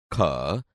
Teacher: ખ વ્યંજન કંઠમાંથી જ નીકળે છે, પરંતુ ક અને હ ભેગા મળી જતા વધુ પ્રાણવાયુની જરૂર પડે છે. એટલે ખ એ મહાપ્રાણ છે.